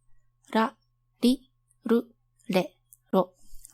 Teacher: At this point, your tongue is not touching anywhere. Then, flick only the tip of your tongue once against the alveolar ridge. Just a single flick.